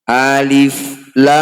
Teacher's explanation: Alif lam mim bertasydid, disebut bacaan gunnah musyaddadah, harus dengung bacanya 2 harokat. · Jadi mat ini berfungsi untuk memanjangkan bunyi 6 harokat. Jadi bunyi lam dibaca huruf aslinya lam, hanya saja dipanjangkan 6 harokat atau 6 ketukan.